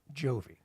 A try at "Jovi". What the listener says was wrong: You know, you're trying your best here, I can tell, but that first consonant is just getting you. It is Jovi. J. So Jovi.